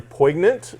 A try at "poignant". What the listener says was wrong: You mean poignant? G is silent?